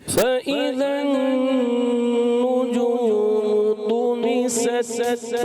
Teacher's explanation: तुमी सत सत तो इसको क्या कहते हैं शदीदा महमूसा तो सख्ती के साथ आवाज़ बंद होनी है ता में फिर पस्ती और नरमी के साथ सांस जारी लेना है तो ये आवाज़ आती है सही है فإذا النجوم طمست وإذا